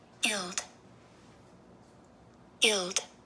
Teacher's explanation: you don't hear very much of the G but it is there and it is a short I